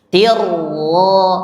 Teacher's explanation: Tuh, namanya bila gunnah idghamkan ke huruf ra, tidak bunyi n, tidak bunyi n karena diidghamkan ke huruf ra tanpa panjang